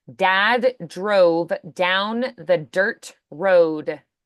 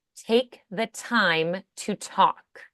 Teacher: D's vibrating in the throat T's not vibrating